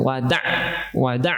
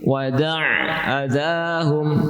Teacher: perluas, perluas bunyi 'ain